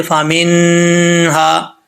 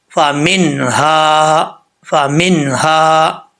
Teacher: اب یہاں پر نون ساکن ہے، نون ساکن میں قلقلہ نہیں ہوگا، غنہ بھی نہیں ہوگا، یہاں پہ نون ساکن کا اظہار ہو رہا ہے، یعنی نون کو ظاہر کر کے پڑھیں گے، یہاں قلقلہ یا غنہ نہیں کریں گے۔